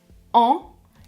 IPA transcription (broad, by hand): ã